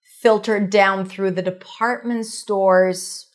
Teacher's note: Department store is a set phrase stresses on department.